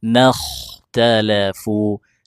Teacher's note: huruf kha sukun sebelumnya fathah dibaca tebal